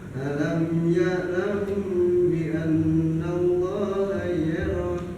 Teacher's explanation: Itu namanya ikhfa syafawi. Ikhfa syafawi itu cara bacanya ditahan jamnya selama 2 harokat. Ketika ada mim hurufnya yaitu ba, mim sukun bertemu ba.